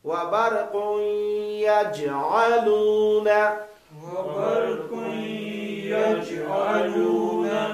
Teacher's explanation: یج میں جیم میں قلقلہ ہے